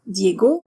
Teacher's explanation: the French always stress the last syllable of names unlike English or Spanish